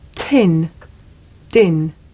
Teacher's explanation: the puff of air at the beginning of tin makes the paper move